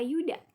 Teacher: bunyi semivokal laminopalatal bersuara